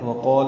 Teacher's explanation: یہ الف مدہ ہے، 2 حرکات لمبا ہے